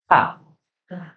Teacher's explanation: ujung lidah ditempelkan di antara gigi dan gusi bagian dalam. Di tempat tertancapnya gigi, ya, tempat tertancapnya gigi dan gusi. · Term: huruf ta